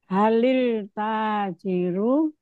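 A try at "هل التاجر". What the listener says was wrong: Lilnya dari mana lilnya? Itu alif lam sehingga bunyinya lil? Kalau Samsiah ada bunyi lilnya? Oke, coba bagaimana kalau disambung? Kalau disambung. Jangan, tadi kan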